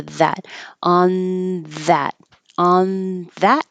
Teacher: my tongue should be behind my teeth but instead I'm keeping it closer to the th position so that it's ready for the that on that on that